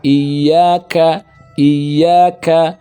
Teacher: Sedangkan kaf itu pangkal lisan bagian atas setelah qaf. Maka bacanya ada hamas.